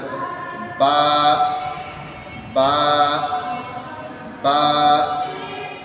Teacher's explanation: বা উচ্চারণ করার নিয়ম হচ্ছে ঠোঁটের সাথে ঠোঁট লাগিয়ে ঠোঁটের মাঝখান থেকে বলতে হবে